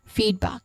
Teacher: The stressed syllable is on feed.